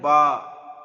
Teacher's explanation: 2 ঠোঁটের ভিজে অংশ হতে উচ্চারিত হয় বা। দেখেন ঠোঁটের 2টো অংশ হয়, একটা হয় ভিজে অংশ আর একটা হয় শুকনো অংশ।